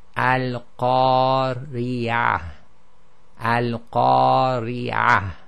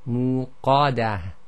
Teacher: the alif itself has now become heavy because of the preceding heavy letter, and that's why it sounds slightly heavier.